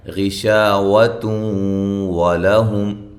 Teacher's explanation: ہم میم ساکن کا اظہار ہے. غشاوۃ ولہم شا یہ الف مدہ ہے، نون تنوین کا ادغام مع الغنہ ہے. لہم لام باریک، ہم میم ساکن کا اظہار ہے.